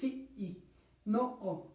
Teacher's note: Ahí tenemos un cierre glotálico